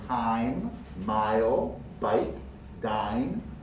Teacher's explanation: And likewise the letter I, if followed by a silent E in time, mile, bike, dine, will always be pronounced as the name of the letter, which in this case is a diphthong. It's a true diphthong, I. A low central to high front diphthong.